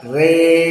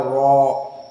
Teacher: Namun bedanya qiraah Hamzah dengan yang lainnya, di sini alif yang datang setelah ra, maka masuk kepada usul qiraah Hamzah, dibaca dalam keadaan al-imalah al-kubro. Maka dibaca re, tidak dibaca ro.